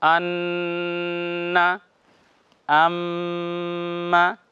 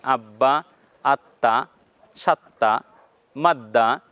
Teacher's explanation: নুনে এবং মিমে তাসদিদ হলে এটা গুন্না হবে অর্থাৎ আওয়াজটা নাক দিয়ে বের হবে এবং কিছু সময় তাকে নাকের ভিতরে রাখতে হবে ধরে রাখতে হবে